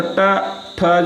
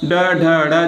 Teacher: ट ठ जो है वह अघोष होगा ड ढ ड़ जो है वह सघोष होगा